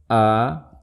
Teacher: Kemudian sifat yang ketiga, istifal, dibaca tipis. Contoh a, jangan dibaca itu hamzah tebal, tapi dibaca tipis.